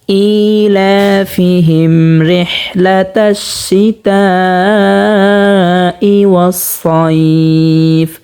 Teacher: এবং এখানে আমরা দেখতে পাচ্ছি মিম সাকিন হয়েছে। মিম সাকিনে বামে বা মিম ছাড়া অন্য কোনো হরফ আসছে র, তো এখানে গুন্না ছাড়া পড়তে হবে।